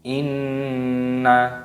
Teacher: Nun tasdid ini hukumnya dibaca ghunnah. Ghunnah itu artinya berdengung. Jadi cara membacanya pun juga didengungkan.